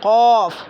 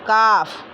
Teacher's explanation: इसको थोड़ा अंदर से बोलेंगे, पुर करके बोलेंगे क़ौफ़, हाँ, और इसको बारीक नरमी के साथ पढ़ेंगे काफ़